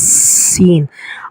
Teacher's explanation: اور سین کو ہر حالت میں باریک پڑھا جائے گا، زبر زیر پیش کسی حالت میں بھی سین کو موٹا نہیں پڑھنا ہم نے، سین۔ اور سین کے لیے تھوڑی سیٹی کی آواز بھی آنی چاہیے۔